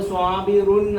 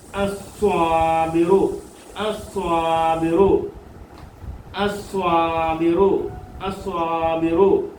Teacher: സ്വാബിറുൻ ദിത്വം. ദിത്വം അലിഫ്ലാമ കയറി വരുമ്പോൾ ദിത്വം നഷ്ടപ്പെടും. നാം സ്വാബിറുൻ അസ്വാബിറു റുൻ എന്ന് പറയത്തില്ല, അസ്വാബിറുൻ എന്ന് വായിക്കത്തില്ല. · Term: തൻവീൻ നഷ്ടപ്പെട്ടു